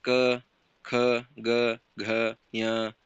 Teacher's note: ಕಂಠೆ ಅಕ್ಷರಗಳು ಬರ್ತವೆ ಅದೇ ರೀತಿಯಾಗಿ ಕಂಠ ಅಕ್ಷರಗಳನ್ನು ಅಂದ್ರೆ ಕಂಠ ಭಾಗದಲ್ಲಿ ಹುಟ್ಟುತ್ತವೆ ಕಂಠ ಭಾಗದಲ್ಲಿ ಹುಟ್ಟುವ ಒಂದು ಅಕ್ಷರಗಳಿಗೆ ಕಂಠ್ಯ ಅಕ್ಷರಗಳು